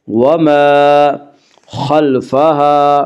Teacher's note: خا کو پر پڑھیں گے، خا حروف مستعلیہ میں